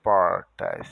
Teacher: E o carioca falou o S de portas, do paulista, com X, portas. Então, o paulista falou diferente, ao enrolar a língua no R, portas, e falou o S diferente. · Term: enrola a língua no R